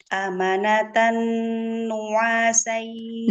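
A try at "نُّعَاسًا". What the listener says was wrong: Nu'a, jangan nyeret. Nu'a, satu-satu. Amanatan nu'asa.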